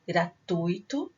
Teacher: Gratuito, a sílaba tônica é a penúltima, ela é uma palavra paroxítona.